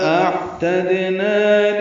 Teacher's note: اعتدنا حمزہ اقصی حلق سے بالجہر ادا کریں گے، عین وسط حلق سے ادا کریں گے. تا کو دال سے ملانا ہے، دال ساکن پہ قلقلہ ہے، نا الف مدہ ہے، 2 حرکات لمبا ہے.